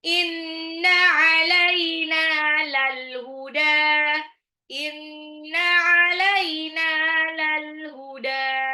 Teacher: Inna gunna alaina nunnya 2 harokat sama dalnya juga 2 harokat